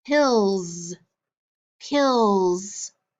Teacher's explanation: the s in that word makes the z sound so it makes a voiced so it can have both sounds just like our letter s